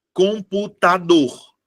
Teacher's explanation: a minha sílaba tônica é a última